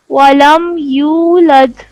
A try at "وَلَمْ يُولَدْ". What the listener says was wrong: ولم يولد نہیں، دال کے اوپر کلکلا ہے، ایکو ساؤنڈ ہے، ولم یولد ولم یولد دال کے اوپر کلکلا کریں گے، یولد د